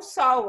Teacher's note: A mesma coisa acontece com o sol, ó. É escrito com L, certo? Mas o som que sai da sua boca é o U.